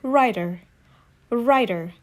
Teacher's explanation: In American accent, sometimes T sounds like D when it is between vowel A, E, I, O, U.